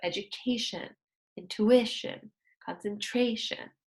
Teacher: we stress the second to last syllable